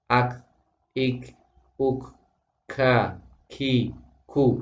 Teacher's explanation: Jadi kalau makhraj apa maaf tentang huruf kaf itu hamesnya tidak berlebihan tapi juga tidak boleh tanpa hames. Maka tengah-tengah.